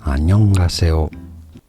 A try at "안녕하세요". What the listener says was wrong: As for me, the last syllable sounds like 오, not 요. You know, 요 is diphthong. That means your sounds start from very short and unclear Y sound and move on to the next sound O, like yo, yo.